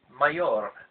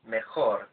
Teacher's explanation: the guttural sound of the Spanish J doesn't exist in English, then our brains feel much more comfortable using the sound of the consonant Y in mayor.